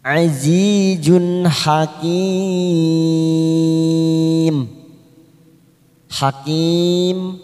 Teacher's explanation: Zun ada tanwin, dhamma tanwin bertemu dengan ha, namanya idhar halki. Kita baca jelas tanpa mendengung.